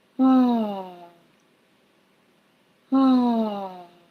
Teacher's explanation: Hear how I'm starting high and then going low.